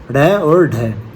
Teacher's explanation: जिनके उच्चारण में जीभ की नोक झटके से तालु को छूकर वापस आ जाती है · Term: उत्तक्षिप्त व्यंजन